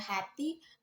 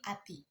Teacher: Fonem H dalam bahasa Jawa, H kadang dilemahkan atau bahkan dihilangkan. Misalnya hati berubah menjadi ati.